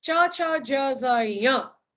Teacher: જીભનો વચ્ચેનો ભાગ ઉચકાય અને તાળવાના કઠોર ભાગને અડે અને વ્યંજન પેદા કરે, બરાબર, તેને તાલવ્ય વ્યંજન કહેવાય.